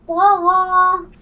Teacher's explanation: طغا میں طا اور غین دونوں موٹے حروف ہیں, موٹے پڑھے جائیں گے